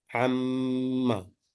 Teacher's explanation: so Meem gunna must be applied here. 2 units of gunna.